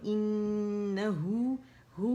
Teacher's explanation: اچھا, انہو ہو میں کیا ہوگا کہ 2 کاؤنٹ کے لیے اس کی آواز گول کریں گے, اقص الحلق سے ہا کو پکڑیں گے, اور ہے کی آواز کو ہو تک لے کے جائیں گے 2 کاؤنٹ تک